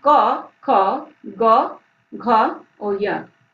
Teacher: कवर्ग, इनका उच्चारण गले से होता है, तो इनका उच्चारण स्थान क्या होगा? कंठ। इस वर्ग में आते हैं क, ख, ग, घ और य।